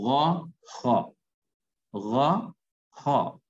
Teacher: غین اور خا، یہ ادا ہوتے ہیں حلق کا وہ حصہ جو منہ کی طرف ہے